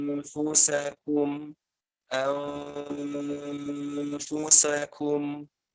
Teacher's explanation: Ketika mengucapin nun, posisi bibir dengan gigi atas sudah nempel. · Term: ikhfa